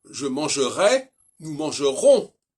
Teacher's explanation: Et le on, c'est une diphtongue nasale classique.